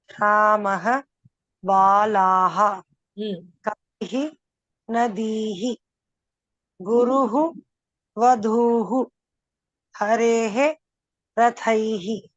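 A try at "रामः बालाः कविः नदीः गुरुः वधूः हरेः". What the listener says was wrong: Uttamam Bhagini.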